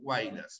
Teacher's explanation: huaylas eso es un triptongo cerrada abierta y cerrado